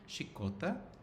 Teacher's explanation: this A, sometimes realized as schwa in central dialects of Catalan, is distinguished quite a lot from this E, which is situated at some extreme of the vowel space.